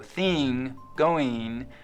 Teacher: the kit vowel, is being split in two. Before NG, it's likely to sound like E